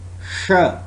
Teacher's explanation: it's voiceless post alveolar fricative sound